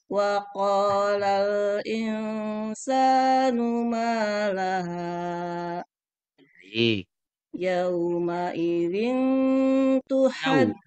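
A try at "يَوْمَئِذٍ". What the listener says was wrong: Yau, huruf U-nya jelaskan sedikit Bu. Yau. Yauma, yuk.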